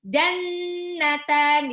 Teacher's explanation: nunnya nun tasdid itu dibaca gunnah. Jadi harus jannatan ditahan 2 sampai 3 harokat. Nggak boleh jannatan gitu, nggak boleh.